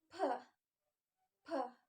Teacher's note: when saying pe the paper move because of strong air